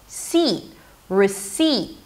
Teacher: You can also drop it to a schwa, re. And the second syllable, which is the primary stress, receipt, is an S, a high E, and a held T at the end.